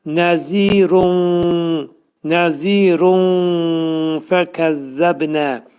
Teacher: Bu da bizdə fə ixva hərfidir. Ona görə burada tənvindəki olan nun nun səsini neyirik? Gizlədirik fənin məxrəcində.